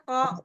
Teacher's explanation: Padahal kan cuma pangkal lidah ko dirasain aja pangkal lidahnya naik ke langit-langit gitu kan ke yang yang lunak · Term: kof